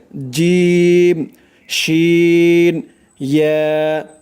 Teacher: জিহ্বার মধ্যখান উপরের তালুর সাথে লাগবে এই 3টি অক্ষর উচ্চারণ করার সময়